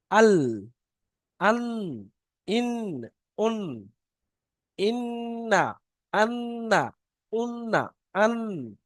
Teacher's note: জিবের আগা এবং তার বারবার উপরের তালুর সাথে লাগিয়ে উচ্চারিত হয়। · জিভটা গিয়ে উপরে যে তালু আছে তালুর সাথে লাগছে, জিভের আগাটা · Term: নুনের মাখরাজ